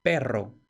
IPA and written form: ˈpero (perro)